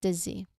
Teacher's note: There's a short E sound there for the first syllable. And there's a soft Z sound for the second syllable